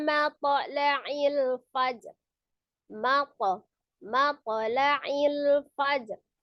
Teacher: Ya, ada huruf to sukun. Maka huruf to itu termasuk huruf yang tebal ya. Jadi ketika dia memantul tetap tebal. Jadi tidak mate, tapi mapo, ya.